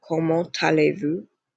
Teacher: You always carry over this sound to the vowel. So you would carry over the T to the A so that it makes a ta sound